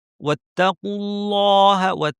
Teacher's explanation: আল্লাহের লাম ভারী কারণ আগে পেশ।